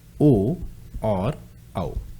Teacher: ओ और औ कहां से बोले जाते हैं? कंठ ओष्ठ से।